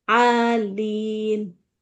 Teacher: Alin harus stabil, A-nya panjangnya sama dengan lin.